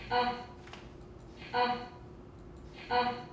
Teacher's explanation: it sounds like a glottal stop at the end